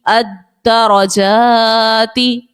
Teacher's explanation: دال جو ہے مشدد ہے، حرف قلقلہ کا جماؤ پیدا کریں گے